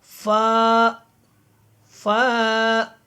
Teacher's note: فا جب آپ اس کو ادا کریں گے تو آپ کو خود محسوس ہوگا کہ صرف ہونٹوں کی حرکت ہوئی ہے